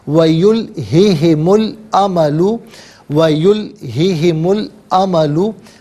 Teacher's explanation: अब यहाँ पर नाज़रीन मीम साकिन को लाम के साथ मिलाएंगे तो मीम पर पेश होगा और लाम साकिन के साथ मिलाया जाएगा। दरमियान में से अलिफ यानी हमज़ा को हज़फ करेंगे।